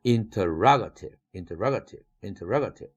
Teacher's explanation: 샤 사운드로 변했지만 액센트가 붙으니까 라 이것이 액센트를 가져가고 그 앞뒤 음절은 전부 샤 사운드로 변했죠